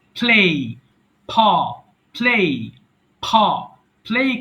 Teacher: দুই ঠোঁট চেপে ঠোঁটের সঙ্গে ঠোঁট রেখে শক্ত করে উচ্চারণ করবেন